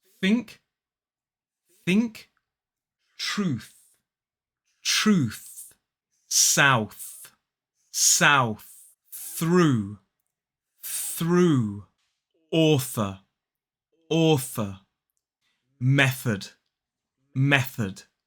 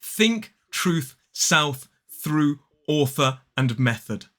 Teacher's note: putting our mouths in the correct position not using our vocal cords and blowing the air down the tongue and through the teeth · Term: unvoiced th sound